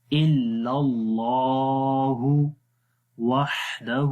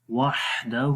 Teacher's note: ہا کی آواز کلیئر کریں گے، ہا کے اندر ہمس ہوتا ہے، صفت ہمس ہے، سانس جاری رہتا ہے